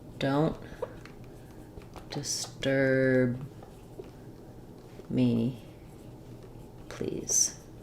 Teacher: the stress comes on the word disturb, and the stress of disturb comes on the second syllable